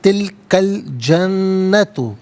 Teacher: تلکا میں کاف پر زبر ہے، اسے الجنتو کے لام ساکن کے ساتھ ملائیں گے، درمیان میں سے الف یعنی حمزہ کو حذف کیا جائے گا